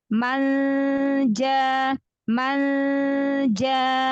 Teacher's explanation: makhrajnya dari tengah lidah ketemu langit-langit Tengah maka dari tengah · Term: ikhfa